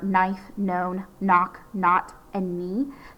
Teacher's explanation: normally it's just going to have this N sound at the beginning instead of the K. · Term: silent K